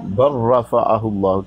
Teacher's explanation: اچھا جی، یہ دیکھیں لام ساکن کے بعد ہے نا را متحرک ہے، لام ساکن کے بعد لام متحرک ہے، تو ویسے آپ دیکھیں کہ پہلے کلمہ کو دوسرے میں ضم کر رہے ہیں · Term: ادغام